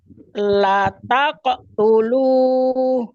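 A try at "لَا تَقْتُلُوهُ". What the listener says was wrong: Nah, coba lanya panjang. La taqtulu. Nah, la taqtulu. Jadi harus memantul.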